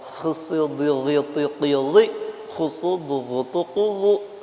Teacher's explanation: Semuanya tebal dan mengangkat pangkal lidah gitu. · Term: isti'la